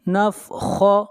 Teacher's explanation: خا کو موٹا پڑھیں گے، خا حروف مستعلیہ میں سے ہے